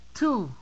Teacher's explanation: la t en inglés es diciendo la t pero de una forma que soples hacia fuera